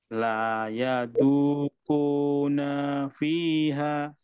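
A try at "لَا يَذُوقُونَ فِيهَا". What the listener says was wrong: Naknya masih kepanjangan. La yadhuquna fiha. Nafi, langsung nafi.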